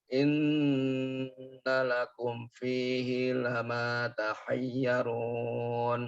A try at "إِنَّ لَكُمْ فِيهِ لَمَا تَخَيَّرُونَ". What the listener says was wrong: pakai kho takhayyarun